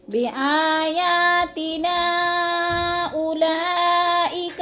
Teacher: حروف مدہ کے بعد ہمزہ دوسرے کلمے میں ہے تو مد منفصل 4 الف مد ہے، 4 الف کے برابر ہم نے اس کو لمبا کرنا ہے